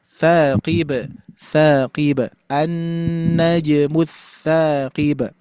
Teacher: di ba sukunnya, di pantulannya jangan terlalu berat, ringan saja.